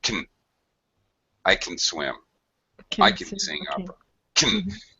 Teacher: It's a super reduced schwa sound